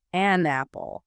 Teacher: It's a speed bump. But if I say an apple, the N acts like a bridge.